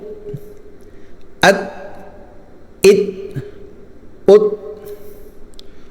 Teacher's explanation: اب یہاں پر تا جو ہے نا، تا اس کو بالکل بند کر دینا ہے، تا نکلے تو تا کی آواز چھوڑنی نہیں ہے، بالکل آواز بند ہو جائے، ٹھیک ہے۔ حمزہ تا زبر ات، اس کو ات ایسے نہیں پڑھنا بلکہ ات۔